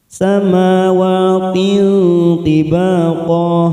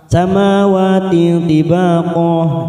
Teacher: Kita samarkan bunyi kasrah tanwin pada huruf ta ini. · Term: ikfa aqrab